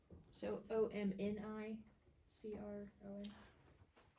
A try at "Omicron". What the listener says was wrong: Omicron. Omni. No N sound. No N. Omicron. Omicron.